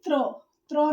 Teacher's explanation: त्र में त और र की साउंड आ रही है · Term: संयुक्त व्यंजन